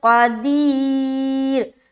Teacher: قاف کو موٹا ادا کریں گے، قدیر. را کے اوپر اسٹاپ کریں گے تو را باریک رہے گی کیونکہ اسٹاپ کرنے کی صورت میں دو پیش ہٹ جائے گا اور سکون آ جائے گا تو را ساکینہ ہو گیا. · یا ساکن اس سے پہلے زیر آ گیا تو یا مدہ ہو گیا، یعنی کہ کھینچیں گے. قاف کو موٹا ادا کریں گے، قدیر.